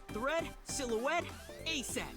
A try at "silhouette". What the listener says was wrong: You sort of enunciate the T there. It depends on where the T in the word is.